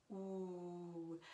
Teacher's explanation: When you have O-U, that vowel combination is pronounced oo, which again, in theory, we sing oo all the time, but you know, in German and French, the sound is very focused and dark and forward. Ooh. I tell my students to say ooh la la, because if they say ooh, everybody knows how to say ooh la la. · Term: the French oo